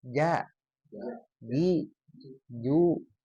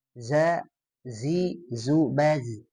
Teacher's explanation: Jim ini ada di tengah. Nah, jangan sampai jadi ke ujung. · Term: huruf jim